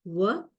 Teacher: Then there are the two semi-vowels, bilabial semi-vowel, because we use both the lips